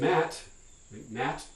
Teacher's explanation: I can pronounce that as mat, mat with a released final stop. I can do it with a partially glottalized and stop like mat.